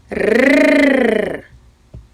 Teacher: цьому слові звук р Що заважає вам вимовляти цей звук так язик він утримується за верхніми зубами і дрижить